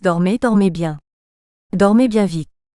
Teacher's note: En français, le mot perd son individualité au profit du groupe. À mesure que le groupe s'allonge, l'accent se déplace pour se reporter toujours sur la syllabe finale. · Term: accent de groupe